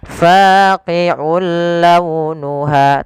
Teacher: Ada hukum tawjudid berupa memasukkan suara tanwinnya kepada huruf lam yang kita kenal dengan idgham. Nah, tapi idgham di sini tidak boleh disertai dengan ghunah. Maka kita namakan dengan idgham bila ghunah. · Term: idgham bila gunnah